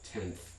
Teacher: So in an English word like tenth, where that final sound is dental or interdental, th, generally speaking, the nasal that comes before it will also be partly or wholly a dental nasal